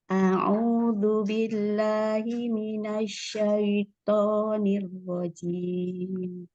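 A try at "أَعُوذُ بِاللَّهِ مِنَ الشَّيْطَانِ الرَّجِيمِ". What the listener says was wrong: Itu, Ana dengarnya masih du. Biasanya karena ujung lidahnya kurang keluar sedikit untuk makhraj zal. Zu gitu ya. Keluarkan sedikit ujung lidahnya ya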